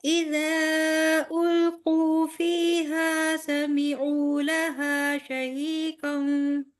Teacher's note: سمیعو پہ صرف مد اصلی ہو رہی ہے نا، واو مدہ. جی تو پھر آپ نے اس کو 4 کاؤنٹس لمبا کر دیا بیٹے.